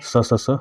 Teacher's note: उष्म व्यंजन जो है स स स ह होते हैं इनका उच्चारण स्थान रगड़ या घर्षण से उत्पन्न उष्म वायु से होता है